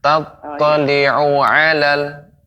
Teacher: Tattali'u alal, ada seperti jeda. Seharusnya tidak ada jeda.